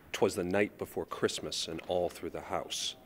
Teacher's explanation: In a way, it's sort of an inverse of a dactyl in that we have two unstressed syllables followed by a stressed one. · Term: anapest